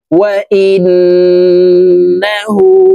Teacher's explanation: এই হামজা তাসদীদ ওয়ালা নুনের সাথে নাকের বাসি থেকে গুন্নাহ করে পড়ব